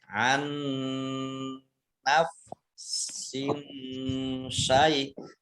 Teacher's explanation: Dibaca nun tasdid, ditandai ada nun tasdid, ini dibaca mendengung, ya. Ditahan 2 harokat. An naf sin syai, sin kasroh tanwin bertemu dengan huruf shin, ini bacaan ikhfa, dibaca samar-samar. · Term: idgham mutamasilain